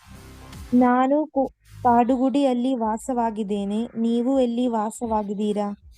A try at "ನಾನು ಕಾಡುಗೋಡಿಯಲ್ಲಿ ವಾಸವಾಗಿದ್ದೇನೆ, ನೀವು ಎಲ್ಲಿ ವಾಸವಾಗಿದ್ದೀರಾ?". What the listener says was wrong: Very good. It should be like that.